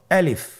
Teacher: আমি যখন আলিফ বলছি এর মধ্যে কোনো টান হবে না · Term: কোনো টান নেই